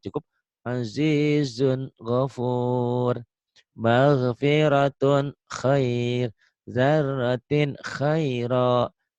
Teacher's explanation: Cara membaca idhar pada nun mati atau tanwin itu cukuplah dibaca terang berbunyi n. Tidak usah ditekan dan tidak usah disentakkan.